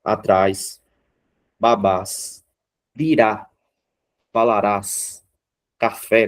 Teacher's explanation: aqui nós temos palavras em que a última sílaba é a mais forte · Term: oxítona